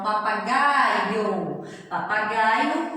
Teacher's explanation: E o I é uma semivogal. A gente só escuta a metadinha do som do I, viu? Escuta o som do I por metade.